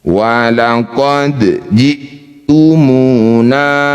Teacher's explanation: Dal sukun disebut qalqalah sugro. Pantulkan kecil saja.